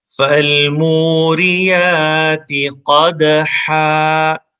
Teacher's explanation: قدحن ہے لیکن وقفے میں 2 زبر الف میں چینج ہو جاتی ہیں تو قدحا پڑھیں گے. اگر رکیں گے تو اس میں دال میں کلکلا کریں گے، اس میں ایک ایکو ساؤنڈ پیدا ہوگی.